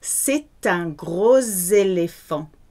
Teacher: The S sounds more like a Z when it's between two vowels. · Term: merge the sounds